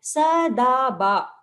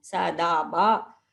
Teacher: you have a short syllable, sa, and then da and ba are long. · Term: yagana